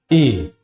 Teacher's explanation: ए का उच्चारण स्थान कंठ और तालू है